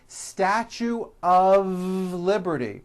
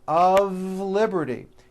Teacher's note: notice how I connected the word of with the word liberty